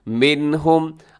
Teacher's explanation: اظہار کرنا ہے، تیزی سے پڑھنا ہے، غنہ نہیں کرنا. منہم، آگے زا رموز اوقاف میں سے ہے، یہاں وقف کر دیجیے گا.